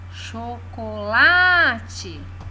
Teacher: lá é a sílaba tônica